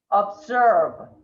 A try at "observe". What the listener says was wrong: Try to keep away from the S. Observe. It's not an S sound at all. It's a Z sound. And the last syllable is that strong V. V.